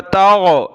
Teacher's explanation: واو سین زبر وس، تا غین زبر تاغ. اس کی جگہ آپ نے گاف نہیں پڑھنا، تگ، تگ نہیں پڑھنا، غین پڑھنا ہے